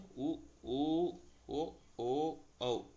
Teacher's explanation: இதல்களை குவிக்கிறதுனால வர்து வந்து உ